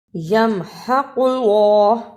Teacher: قاف کو موٹا پڑھنا اور اللہ کو پر پڑھنا